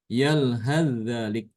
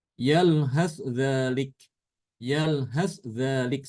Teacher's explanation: Di surat Al-A'raf, yalhaz dzalik ya. Kalau bacaan Imam Hafiz kan dia mengidghamkan sa ke dzal ya kalau disambung.